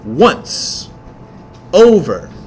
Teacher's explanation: the basic rhythm, is stressed followed by unstressed. That's called a trochee.